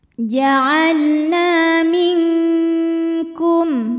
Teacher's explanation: Sebab ada alif didahului harokat fathah. Maka huruf nun panjang 2 harokat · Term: mad tabi'i zahiri